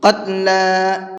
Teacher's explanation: یہاں پر قاف کو بھی پر کر کے پڑھیں گے اور لام کو کھینچ کر کے پڑھیں گے